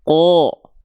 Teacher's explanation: Ketika huruf qaf berharokat fathah, dia nggak dibaca ka, tapi dia dibaca ko. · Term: huruf tebal